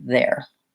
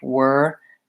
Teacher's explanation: So when saying there, I really should be thinking about it as an air diphthong versus were is just the single vocalic sound